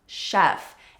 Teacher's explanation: Notice that with chefs the CH sounds like an SH it's a soft sound